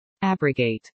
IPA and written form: ˈabrəɡeɪt (abrogate)